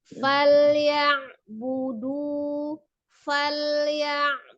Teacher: lam sukun sifatnya juga sama, tawasud atau bainiyah, tidak ditahan fal atau juga tidak terlalu lepas fal ya, tidak. Sama, sempurnakan lam sukunnya.